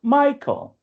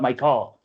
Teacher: in English, the word Michael has like emphasis on the first syllable